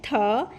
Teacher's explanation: When you keep a paper in front of your mouth and say the, more air should come out of your mouth and the paper should vibrate